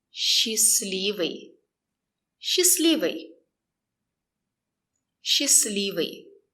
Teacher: We don't pronounce the letter T.